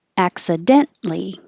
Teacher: You don't say the T before the L.